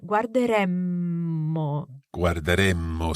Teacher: we need to keep the vowel E very, very short to allow for a longer M. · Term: double M